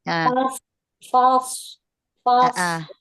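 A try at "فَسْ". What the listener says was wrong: caranya, caranya biar huruf fa-nya nggak terikut tebal atau huruf-huruf yang lainnya, maka dieja satu-satu. Fa, fa, fa, tipis ya. Fa. Nah, terus sotnya. So, als, fa, als, fa, als. Nah, terus gabung. Fals, fals, fals.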